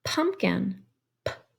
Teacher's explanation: we have that puff of air coming through our mouth when we make the beginning sound in the word pumpkin